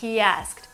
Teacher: somehow we insert a new sound, which is Y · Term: intrusion